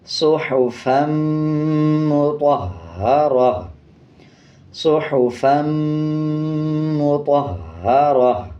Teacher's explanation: جب وقف کریں گے تا کو ہا میں تبدیل کر دیں گے اور وقف کرتے ہوئے ہا کی آواز کو آدھا پڑھیں گے اور 2 زبر کو سائلنٹ کر دیں گے.